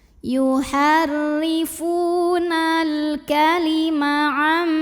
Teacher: Karena alif lamnya menghadapi huruf qomariyah yaitu kaf, maka lam sukun ini dibunyikan dengan izhar atau jelas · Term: alif lam qomariyah